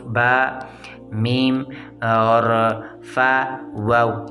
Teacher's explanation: 4 حروف، با، میم اور فا، واو، یہ 4 حروف ہونٹوں سے نکلتے ہیں، شفتین ہیں